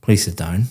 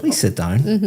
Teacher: But if I said, please sit down, my intonation is going up. It sounds completely different · For example, when you came in here today and I said, please sit down, very flat intonation going down